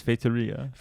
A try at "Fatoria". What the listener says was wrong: That's pretty good. So, okay, first thing, the stress is on Fatoria. The R is still awful, but Well, it's a very Portuguese R. Fatoria.